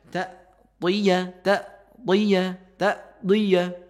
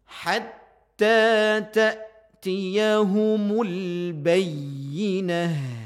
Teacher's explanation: Walaupun juga dia mempunyai sifat hams ya. Mempunyai sifat syiddah juga mempunyai sifat hams.